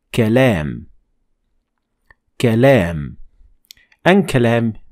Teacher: Notice here that the alif is shorter and avoid making the length of alif the same as lam.